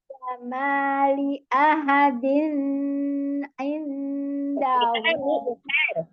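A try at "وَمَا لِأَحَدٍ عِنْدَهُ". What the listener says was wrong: Jangan ditahan. Izhar tanwin ketemu dengan ain. Kalau ikhfa-nya nun sukun ketemu dengan dal baru ikhfa.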